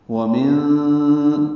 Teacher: نون ساکن کے بعد دال آنے کی وجہ سے اخفا ہے، نون کی آواز چھپائیں گے